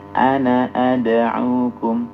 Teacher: Semua kata ana yang artinya saya ketika dibaca sambung maka pendek